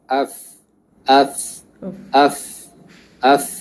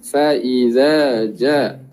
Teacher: hujung gigi atas dilekatkan pada perut bibir bawah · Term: huruf fa